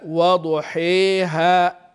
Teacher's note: الالف اللي بعد الحاء هي اللي تمال فقط والالف الثانيه مستقيمه